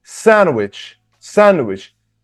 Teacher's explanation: the stress is on the first syllable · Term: stressed syllable